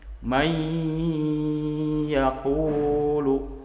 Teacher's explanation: bunyi n-nya bunyinya udah nggak ada lagi berubah menjadi bunyi ya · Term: idgham maal ghunnah